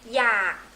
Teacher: low tone you have K in your throat